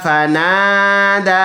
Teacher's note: الف مدہ ایک الف کی مقدار لمبا. دال کڑی زبر دا فنادا، ایک الف کی مقدار اس کو بھی لمبا کریں گے.